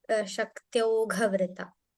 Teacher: There's no stress on the vrita. It is just Shaktyaughvrita.